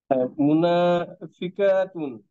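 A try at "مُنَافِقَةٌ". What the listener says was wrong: কতুন, মুনাফিকতুন। না না না, টানলে তো অন্য কিছু হয়ে যাবে। আমার মতো করে বলেন মুনাফিকতুন। না, আমার মতো করে বলেন মুনাফিকতুন। হ্যাঁ, আরো কতুন, দ্রুত কতুন।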